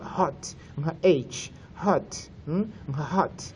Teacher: urumva ndongeramo icyuka iyo ngiye kuvuga hot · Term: breath sounds